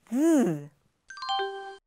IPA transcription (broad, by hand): ð